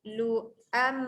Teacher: Lu kawan dengan hamzah bukan waw Lu. Lu'am masuk bunyi mim dengungkan